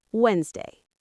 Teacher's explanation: The D is silent